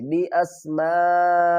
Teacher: فَقَالَ أَنبِئُونِي بِأَسْمَاءِ هَؤُلَاءِ، بعض عربی حمزہ کو سین سے ملائیں گے، بِأَس، میم الف مد زبر ما، 3 سے 5 الف کی مقدار کھینچ کر پڑھیں گے۔